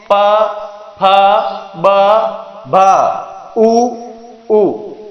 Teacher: ये हमारी वे ध्वनियां हैं जिनका उच्चारण करते समय दोनों होठ आपस में टकराते हैं, स्पर्श करते हैं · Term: ओष्ठ्य ध्वनियां